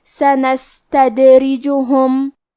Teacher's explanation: سین ساکن ہے، تو ہمیں سین کو ہمزے سے پڑھنا ہے، اور ہمزے کا معنی ہے کہ حرف کی آواز ایسے کمزور ہو کہ اس میں پستی پائی جائے